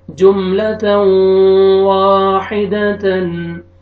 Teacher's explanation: یہاں پہ دیکھیں آپ تنوین کے بعد حروف یرملون میں سے جو 4 لیٹر میں نے آپ کو 4 لیٹرز بتائیں جن کا مخفف ہے یمون میں سے واو آ رہے ہیں، تو یہاں پہ آپ نے ادغام کرنا ہے، اور ادغام غنہ کے ساتھ، ادغام بالغنہ، غنہ کے ساتھ کریں گے۔ اور یہ واو فتحہ الف صغیرہ، الف مدہ کے قائم مقام ہے، آپ نے یہاں پہ واو کو کھینچنا ہے۔